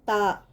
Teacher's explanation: تا زبان کی نوک کو اوپر کے سامنے والے 2 دانتوں کے جڑ کے ساتھ لگانے سے نکلتا ہے